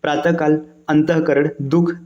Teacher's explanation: विसर्ग की ध्वनि अघोष मानी जाती है।